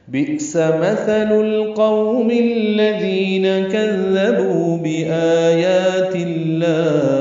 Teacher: بئس میں حمزہ ساکن جھٹکے سے ادا ہوگا